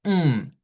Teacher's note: Aquí la m va sola porque en esa posición solo hacemos mm no hay otro sonido y hay vibración